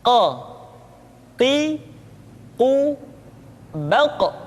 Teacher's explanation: Berikutnya pengucapan huruf qa. Huruf qaf diucapkan dengan cara menyentuhkan pangkal lidah kita dengan langit-langit bagian belakang.